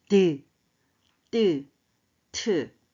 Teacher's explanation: 막혔다 터지면서 나는 잇몸 소리